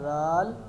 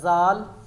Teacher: اگر وسلنگ آتی یہ بنتا زال. اس میں وسلنگ نہیں ہے زال میں, تو یہ وسلنگ کے بغیر زال